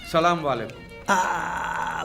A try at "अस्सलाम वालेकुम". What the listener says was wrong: सलाम वालेकुम नहीं अस्सलाम वालेकुम।